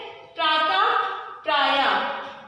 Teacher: विसर्ग का जब भी हम लोग उच्चारण करते हैं तो उसमें हमें एक हा छिपा हुआ मिलता है